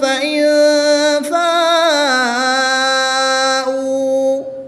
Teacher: واؤ ساکن سے پہلے حرف پر پیش ہے تو اس لیے یہاں پر واؤ مدہ ہوگا، 1 الف یعنی 2 حرکات کے برابر کھینچ کر پڑھیں گے · الف مدہ کے بعد حمزہ اسی کلمے میں ہے تو یہاں پر مد متصل ہوگی، 3 سے 5 الف تک کھینچ کر پڑھیں گے